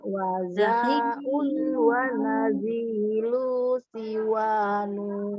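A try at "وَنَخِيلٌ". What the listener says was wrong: Bukan naji. Bukan naji, tapi nakhil. Itu kho, bukan ji. Bukan, kho. Nakhilun.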